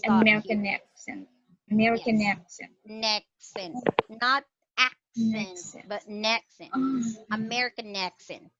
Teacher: you will feel a glottal stop in your throat when you say American accent